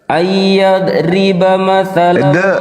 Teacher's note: Bukan huruf qalqala dia. Oh iya, berarti nggak ditekan, nggak mantul.